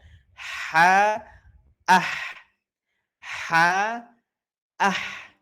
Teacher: Pangkal lidahnya masih belum terangkat. Lalu ruang permukaan ee lidah dan langit-langit mulut atas juga terbuka. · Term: istifal dan infitah